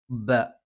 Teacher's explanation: രണ്ടു ചുണ്ടിൽ നിന്നാണ് മേലെ ചുണ്ട് അല്പം പുറത്തേക്കും താഴെ ചുണ്ട് അല്പം ഉള്ളിലേക്കും കയറി നിൽക്കും